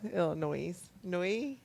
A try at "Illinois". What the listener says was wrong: There's no S. It's Illinois. That's silent.